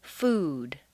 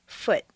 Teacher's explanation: We're contrasting the sound oo, a strong, non-reducible sound, oo, that is made far forward in the mouth, with the lips fully rounded, with the reduced sound